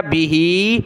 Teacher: ایک الف کی مقدار میں ہا کو نیچے کی طرف کھینچا